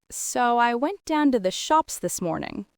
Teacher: That rising pitch at the end makes it sound like you're including the listener, seeking confirmation.